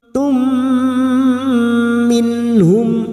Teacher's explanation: nun sukun bertemu ha, idhar halqi dibaca jelas tanpa mendengung.